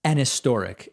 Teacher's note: very clear consonant sound like if i just say historic but historic has a relatively soft h when in context